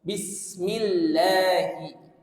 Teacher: Kemudian millahi, karena dia ada tasdid di situ, maka ada an-nabr atau menekan suara, menaikkan suara sedikit supaya lamnya ini terdengar sebagai lam yang memiliki syiddah atau lam yang memiliki tasdid